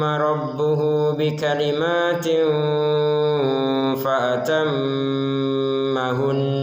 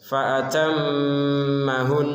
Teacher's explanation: Nun bertasydid atau mim bertasydid, jika berada di ujung kalimat tetap harus ada tekanannya atau gunnahnya.